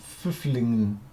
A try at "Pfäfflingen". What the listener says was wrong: There is no double F behind it.